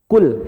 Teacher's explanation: hati-hati lamnya jangan ada pantulan e. Karena huruf yang boleh dipantulkan hanya 5.